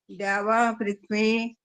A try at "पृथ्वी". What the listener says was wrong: देखो पृथ्वी, ऐसे ही तो बोल रहे हो पृथ्वी, आपको समझ आ नहीं रहा ना असल में कि पृथ्वी होता है पृथ्वी, अलग अलग बुलवाया था इसीलिए कि था में छोटी की मात्रा बोलो, इकट्ठा बोलते हो पृथ्वी आ जाता है।